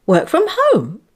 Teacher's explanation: Did you notice B's intonation going up? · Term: echo questions